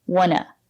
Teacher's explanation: Sometimes we don't pronounce t and we say wanna.